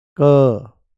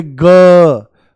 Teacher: क आप बोलोगे क कोई वाइब्रेशन नहीं। नाम मात्रा और जैसे ही बोलोगे ग घरा हिल जाता है। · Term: अघोष